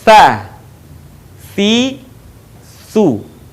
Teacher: Berikutnya perhatikan bagaimana melafalkan huruf ta, yaitu dengan menyentuhkan ujung lidah kita dengan dinding dua gigi seri bagian atas, kemudian diucapkan dengan mengalirkan suara dan nafas kita dengan lembut.